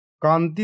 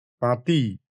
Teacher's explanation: আগের স্বরধ্বনিটিকে একটু দীর্ঘ বা নাশাল করে দিয়ে যেত। এটি এক ধরনের ধ্বনিগত সরলীকরণ।